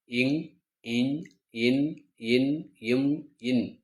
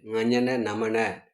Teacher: இவை ஆறும் மூக்கிலிருந்து பிறக்க கூடிய எழுத்துக்கள் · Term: மெல்லினம்